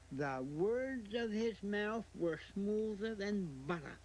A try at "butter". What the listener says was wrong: The butter part is wrong, though. You have to, there are T's in it. You have to say butter. Butter.